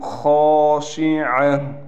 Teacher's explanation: خا کو موٹا بھی کرنا ہے، اور خا کے بعد الف ہونے کی وجہ سے خا کو ہم ایک الف کی مقدار کھینچ کر پڑھیں گے۔